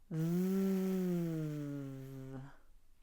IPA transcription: v